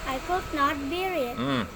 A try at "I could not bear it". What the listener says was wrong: Bukan bir. Bir itu minuman keras. I could not bear it.